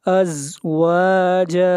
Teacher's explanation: زا کو پڑھتے وقت سیٹی کی آواز آئے گی، زا حروف صفیر میں سے ہے